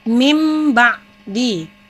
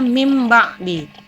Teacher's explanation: Jadi cara membacanya mim ba'di, karena nun mati atau tanwin tersebut diubah menjadi bunyi huruf mim. Nah, ini nun mati bertemu dengan huruf ba, maka nun matinya ini dirubah menjadi bacaannya mim, maka membacanya mim ba'di. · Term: iklab